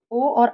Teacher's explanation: कंठ और ओठ दोनों का प्रयोग किया जाता है